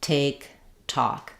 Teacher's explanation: the Air Bursts out and we hear that release · my tongue stops the air behind my teeth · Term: release of the air